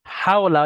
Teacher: হাওলা, এটা বড় হা, হাটার উচ্চারণ একটু বড়, মানে গোলার মাঝখান থেকে আওয়াজটা আসে